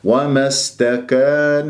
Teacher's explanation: ومستكان سين صفير هي طبعا حروف الصفير ثلاثة الصاد أقواها السين ثم الزاي وتتجلى الصفة في الحروف الساكنة السين ساكنة يجري فيها صوت والنفس